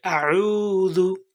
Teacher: আমাদেরকে আইনের উচ্চারণ হলকের মধ্যখান হইতে নিয়ে আসতে হবে